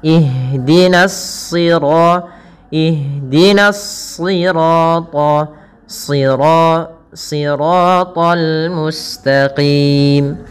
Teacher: Yang ditebalkan adalah huruf shadnya, yang dimana di sini huruf shad termasuk huruf-huruf isti'la. yang dia pangkal lidahnya terangkat dan menebal